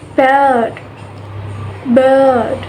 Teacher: The tongue is mid-height and the central part of the tongue is raised, and the lips are unrounded.